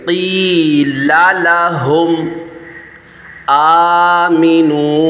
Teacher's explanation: حمزہ کو ایک الف کھینچنا ہے، کیونکہ حمزہ کے اوپر اسٹینڈ کھڑا زبر ہے، ایک الف کی مقدار، اس کو کھینچ کے پڑھیں گے۔